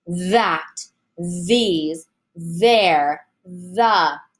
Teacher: give it time let your voice buzz before you continue on to the vowel · common words have a voiced like that these there and the you should really have a good buzz going on with your with your voice box · You should really have a good buzz going on with your voice box here, with your larynx. And really, you should feel it on your tongue as the air is coming through.